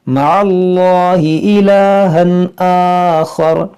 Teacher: یہاں تنوین کے بعد حمزہ ہے تو یہاں پر اظہار کریں گے